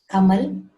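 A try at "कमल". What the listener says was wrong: Kamala, not Kamal. Kamala. It is La. So like Hindi, we should not cut the last vowel. It should be pronounced as it is.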